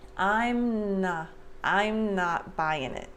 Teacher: Before I finish the M, before I separate my lips, I start the N sound for not.